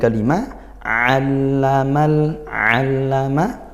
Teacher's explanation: ainnya di tepatkan makhrajnya yaitu di tengah tenggorokan